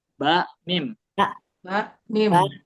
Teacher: Ya, dua bibirnya ini bersentuhan. Nanti yang sama pelafalannya itu mim dan ba ya, dia sama-sama menutup gitu.